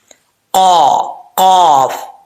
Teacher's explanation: اس کا مخرج کیا ہے؟ زبان کی جڑ اوپر والے تالو کے نرم حصے سے لگے تو قاف پڑھا جاتا ہے, فل ماؤتھ. ٹھیک ہے, یعنی موٹا پڑھا جائے گا, پر پڑھا جائے گا.